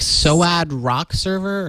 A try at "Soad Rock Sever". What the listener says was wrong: Sever, not even server.